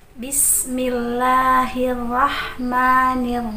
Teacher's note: bismillah sin-sin usahakan mendesis